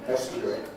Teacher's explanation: I would normally say estuary, which doesn't have a J in the middle